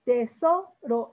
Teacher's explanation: porque es una palabra grave. Su sílaba tónica está en la penúltima sílaba.